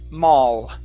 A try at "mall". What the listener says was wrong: Okay, touch your tongue to the top of your mouth. Right now you're ending with a U, saying mao. Instead of mao, it's mall. Touch your tongue. Mall. Okay, so remember the L is a tongue movement, not a lip movement.